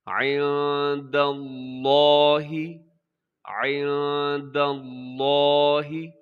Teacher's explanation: لفظ اللہ کو ہم موٹا پڑھیں گے کیونکہ اس سے پہلے دال کے اوپر زبر ہے